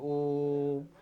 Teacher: और संस्कृत में भी मंत्र आदि उच्चारण में मात्रा को लंबा खींचा जाता है। दीर्घ से भी इसमें अधिक समय लगता है, त्रिमात्रिक स्वर कहते हैं इसे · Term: प्लुत स्वर